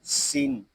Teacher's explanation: یہاں سین میں سیٹی کی آواز آئے گی، اس کو سین ایسے نہیں پڑھیں گے، اس کو پڑھیں گے سین.